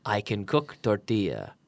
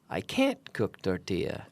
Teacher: we have to add a special emphasis on can't